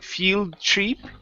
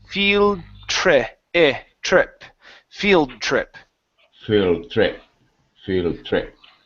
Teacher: the long e here Fe field that was good but but you need to switch back to a short I in the next words so instead of saying field Tre it's field trip field trip